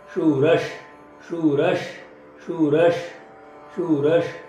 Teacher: शूर तशु दीर्घ आहे, ह्रस्व आहे, पुढे विसर्ग त्याचा उच्चार श